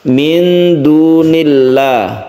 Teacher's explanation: Apabila lafadz Allah ini didahului dengan kasroh, maka membacanya disebut tarkik atau tipis.